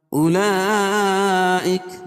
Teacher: أولئك مد متصل ہے، کیونکہ حروف مدہ کے بعد حمزہ جو ہے اسی کلمے میں تو مد متصل ہوتا ہے، اس کو مد واجب کہتے ہیں، اس میں توسط اور طول ہے